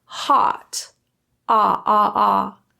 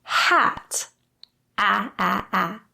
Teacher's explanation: Our jaw is open, ah, ah, ah. And our lips are retracted almost into a smile.